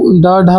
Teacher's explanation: ड ढ जो है वो है उत्क्षिप्त वर्ण है